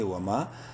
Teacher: واو زبر وا میم الف زبر ما الف مدہ ہے، میم کو ایک کے برابر لمبا کریں گے